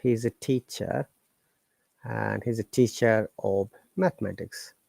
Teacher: we are pronouncing R because after R there is vowel sound